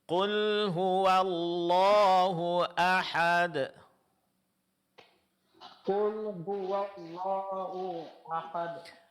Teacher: Wnya ditipiskan, vokal a-nya dipertahankan.